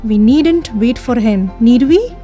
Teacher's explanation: a rising tone is used in a question tag whether remark is tentative and uncertain